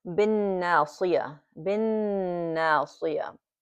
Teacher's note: we are not pronouncing the al here, the alif and the lam here. And it goes automatically to the noon mushaddada.